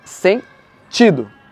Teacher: na palavra sentido a sílaba tônica está no ti porque é uma paroxítona